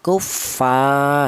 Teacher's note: panjangnya matobi yaitu 1 alif atau 2 harokat atau 2 ketukan